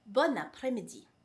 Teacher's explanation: because it is followed by a vowel, we say bon après-midi. So there's a liaison right there.